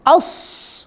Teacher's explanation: suara tajam yang keluar di antara celah-celah lidah, ujung lidah dengan gigi seri bawah. Ketika ujung lidah menempel ujung gigi seri bawah atau bagian gigi seri bawah, ya, di situ keluar kemudian suara tajam. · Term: safir